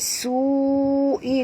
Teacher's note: Su'i di sini 4 hingga 5 harakat mad wajib ya. Perkataan su di sini satu perkataan ya.